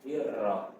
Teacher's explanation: Kenapa tarqiq atau tipis dibaca? Karena sebelum ro itu adalah barisnya kasroh, ya, dirra.